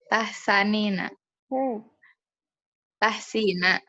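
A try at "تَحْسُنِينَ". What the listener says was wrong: Ingat sinnya harkat apa? Berarti anti sinnya kan tadi domah.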